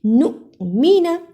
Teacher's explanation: نُؤْمِنَ، نون پیش حمزہ نو، میم زیر می نون زبر نا، نؤمن، اسے نون پیش واو نومینا نہیں پڑھنا، نون پیش حمزہ نو، چھوٹا سا جھٹکا لگایا، صحیح آواز نکالی